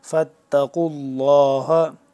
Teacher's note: لام لفظ اللہ پر کر کے پڑھیں گے کیونکہ اس سے پہلے جو لفظ قاف ہے اس کے اوپر پیش ہے